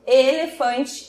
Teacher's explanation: e a vogal e como elefante ela já é mais fechada